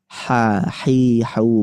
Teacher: Harus ada nafas yang mengalir atau pita suaranya tidak bergetar. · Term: Hames